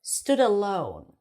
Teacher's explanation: Alone has the long O as in go